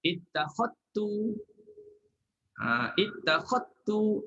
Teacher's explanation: Kolon dia kena masukkan, kena idghamkan zal dalam ta.